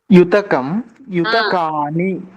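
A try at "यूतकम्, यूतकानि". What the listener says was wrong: Yes, yutakani. Perfect.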